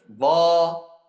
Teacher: Yang beda huruf dha, pangkal lidah harus naik. Dha. Kalau kita sekarang baca huruf dal dan pangkal lidah naik, langsung diganti ke huruf dha.